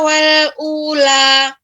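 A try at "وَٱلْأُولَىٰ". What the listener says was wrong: Wal ula mungkin lebih dimonyongkan sehingga pengucapan u lebih memberikan lebih pas lagi.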